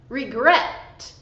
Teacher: With this verb, regret, the stress is on the second syllable. So, stress on the final syllable, and we have consonant, vowel, consonant.